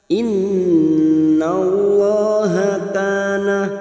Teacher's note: Nun yang bertasdid gunna musaddada kita tekan selama 3 harokat.